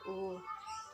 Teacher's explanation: uh tinggi belakang bulat